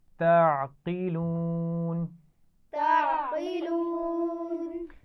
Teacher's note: عین کے مخرج کا خیال رکھنا ہے، یہ باریک پڑھا جائے گا اور قاف کو موٹا پڑھنا ہے